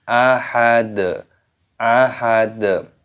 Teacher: Wala yuthiqu, watha, panjangkan, wathaqahu, hunya dipanjangkan, ahad, ahad. Di sini ketika waqaf berhenti, maka huruf dalnya ini dimatikan, dibaca sukun dan ditambah dengan qalqalah atau pantulan suara.